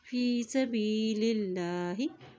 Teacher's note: अल्लाह के नाम से पहले ज़ेर आ गया तो अल्लाह का नाम बारीक अदा किया जाएगा